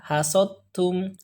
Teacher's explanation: Jadi da-nya tidak kita baca, langsung saja ke ta.